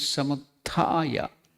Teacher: You have to chant it in two unit of time two matra. So it will be samuta. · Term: elongation